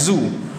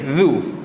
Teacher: Bila kata huruf za ni, bila nak tahu betul ke tak, suara dia akan kuat. Suara dia akan kuat, angin dia tak ada. Huruf tu tak ada angin.